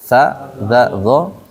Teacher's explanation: ujung lidah nempel ke ujung gigi seri atas